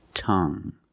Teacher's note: you have only the nasal sound there's no G